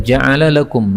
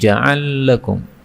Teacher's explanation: lam ketemu lam boleh idgham